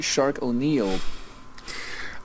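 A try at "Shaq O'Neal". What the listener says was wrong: But his name is not Shark, it is Shaq.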